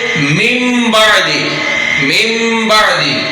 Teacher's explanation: اب یہ نون ساکن ہے، اس کے بعد با آ رہا ہے، اب یہ نون ساکن کے بعد با آیا تو نون کو کنورٹ کر دیا ہم نے میم میں، تو جب بھی نون ساکن کے بعد با آئے گا تو نون کو میم میں کنورٹ کر کے پڑھیں گے۔ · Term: اقلاب